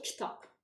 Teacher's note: Burada sadəcə B hərfi P-yə keçir. K hərfinin özü dəyişmir.